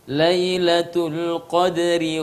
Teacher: rok dibaca dengan tipis karena dia berharakat kasrah